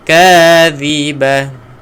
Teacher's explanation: Dhi keluarkan hujung lidah